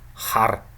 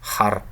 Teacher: in back voweled words, this is pronounced more like in the uvular region. For example, in the word har, which means black, the color black, har.